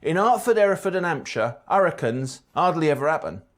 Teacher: Like most regional accents in England, H's are long gone.